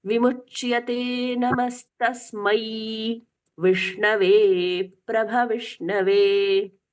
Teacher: ऐ की मात्रा है तो उसमें 2 स्वर सुनाई देते हैं, अ और ई, ये स्पष्टता से सुनाई देने चाहिए